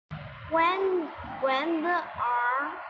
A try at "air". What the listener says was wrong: No, not R. It's not R. It's air. When the air.